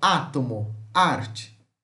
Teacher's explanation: aberto Central oral não arredondado como átomo arte